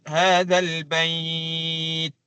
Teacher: kalau kita waqaf, hadzal bait. Itu barulah jelas bunyi syiddah ataupun bunyi hamasnya